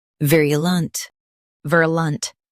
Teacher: Vir, lunt, virulent. Stress vir and soften lunt.